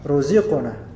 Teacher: Jadi biarkan aja qaf ini terpantul qalqalah, ruziqna. Tapi bukan ruziqna sengaja, bukan, tapi ruziqna.